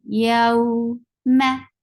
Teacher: Yow is 2 counts long vowel, because this is Waaw Leen. Whenever there is a fatha before Waaw Sakin, you have to make it 2 counts long, and it should be said very softly. Yow ma. Ma is short.